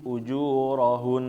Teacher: ketika Nun bertasydid di akhir kalimat berhenti itu ditahan · ketika masuk Nun Hun itu n-nya dipanjangin